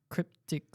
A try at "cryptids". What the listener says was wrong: No, not C. Cryptids. C-R-Y.